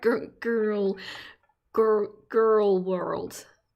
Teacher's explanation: But I think what Americans do is throw the R to the front of their mouth.